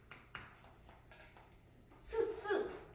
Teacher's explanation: 스스 쓸린다 그런 소리가 난다 해서 마찰음